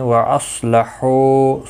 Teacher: صاد مستعلیہ ہے، پر پڑا جائے گا، حو واو مدہ ہے، ایک الف کی مقدار کے برابر کھینچ کر وقف بھی کریں گے، اور ملانے کی صورت میں بھی ایک الف کی مقدار کے برابر کھینچ کر پڑھیں گے۔